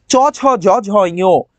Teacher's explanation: তালব্যজাত ধ্বনি, যেগুলো অগ্র তালু দিয়ে হয়। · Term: তালব্য ধ্বনি